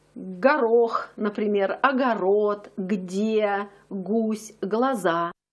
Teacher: Давайте вспомним, как произносится буква глаголь в Москве. Она произносится твердо. Это взрывное г.